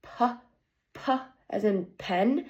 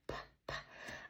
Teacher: Um the manner is that it stops air flow and it is an unvoice sound because my vocal words are not vibrating